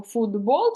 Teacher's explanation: це уподібнення приголосних як ми в вимові кажемо футбол через д а пишемо через Т